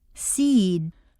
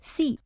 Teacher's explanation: At times, what appears to be a single-syllable word will have a longer sound to it. Seed takes longer to say than seat, for example. This was introduced on page 25, where you learned that a final voiced consonant causes the previous vowel to double.